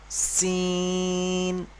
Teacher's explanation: দেখুন এই আকৃতিটা দেখুন, এটা হলো সিন, তিন আলিফ পরিমাণ টান হবে। এইটা উচ্চারণ করার সময় যেমন সিটি, সিটি মতো একটা আওয়াজ হয়